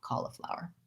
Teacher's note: may say it more like cauliflower with more of an ah i use the rounded ah